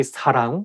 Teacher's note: you have to say 사랑 with a softer S, not 사랑